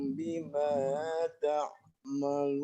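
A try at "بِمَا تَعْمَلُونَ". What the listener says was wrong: Bimanya kepanjangan, Pak Dokter coba diulang sedikit. Bima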